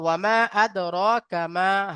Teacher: হুরুফে মাদ্দার পরে হামজা দ্বিতীয় শব্দের প্রথমে এসেছে, তাই মধ্যে মুনফাসিল, 2 থেকে 3 আলি পরিমাণ টান দিয়ে পড়তে হবে